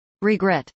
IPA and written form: rɪɡrˈɛt (regret)